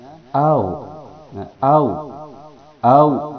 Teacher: Lin ketika sebelumnya ada fathah dan dia sendiri disukunkan sehingga dia bunyinya dilemaskan